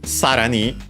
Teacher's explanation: sarani, accented on the first syllable, means furthermore.